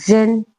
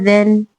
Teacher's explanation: اس میں ز پریشر سیٹی کے ساتھ، ذال بغیر سیٹی کے